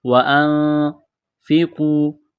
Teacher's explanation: نون ساکن کے بعد فا ہے، حروف اخفا ہے، آواز ناک میں چھپائیں گے، غنہ کریں گے